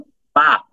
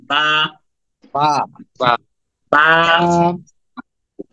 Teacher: এটা এক আলিফ টান হবে এক সেকেন্ড টান হবে